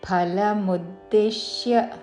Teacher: ఫల అనకూడదు, మహాప్రాణాక్షము ఫాతో ఫలముద్దిశ్య